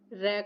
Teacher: इसका अर्थ है कि जिस वर्ण का उच्चारण करते हुए जीभ के अगले हिस्से में कंपन उत्पन्न होता है उसे हम लुण्ठित व्यंजन बोलते हैं।